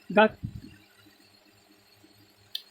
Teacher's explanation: गा का उच्चारण स्थान कंठ से